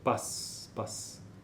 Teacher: O que é mais forte nessa sílaba o a né né então no início você tem uma uma entrada uma saída de ar um pouco menos potente